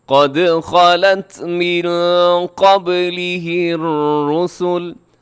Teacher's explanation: قد قاف موٹا ہے، دال قلقلہ ہے، خالت خا موٹا، لام تا دونوں باریک ہیں، تا کو تھوڑا سا صفت حمز کا خیال رکھتے ہوئے قد خالت، خالت من قبلہ الرسل، من قبل، یہاں نون ساکن ہے، نون ساکن کے بعد قاف ہے تو یہاں پہ ہم اخفا کریں گے۔